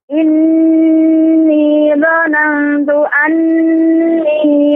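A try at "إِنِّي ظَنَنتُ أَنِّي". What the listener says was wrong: Dhanantu, Ibu. Dhanantu ini ikhfa. Ikhfa juga ada gunnahnya juga. Tempo gunnah yang dipanjangkan. Dhanantu. Jadi tidak terburu-buru. Dhanantu. Dhanantu. Inni dhanantu anni.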